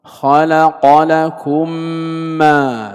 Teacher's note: فنحن ننطق الميمين ننطقها ميما واحدة مشددة، هذا هو الإدغام، التقاء حرفين الأول ساكن والثاني متحرك بحيث يصيران حرفا واحدا مشددا، هذا هو الإدغام. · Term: إدغام مثلين صغير